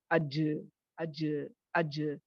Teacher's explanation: جیم میں وسپرنگ نہیں ہوتی، یہ بہت اسٹرانگ ہوتا ہے، اج اج اج، اسی لیے اس میں قلقلہ لایا جاتا ہے تاکہ اس کی سختی کو تھوڑا کم کیا جائے، ٹھیک ہے؟